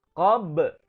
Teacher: kita menemukan huruf ba yang berharokat sukun, ya, qab, jadi mantul, maka hukum bacanya adalah qalqalah sughra.